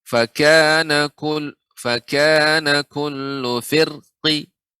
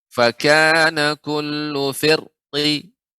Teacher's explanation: ra boleh dibaca dengan tebal, juga boleh tipis ketika waqaf dengan raum.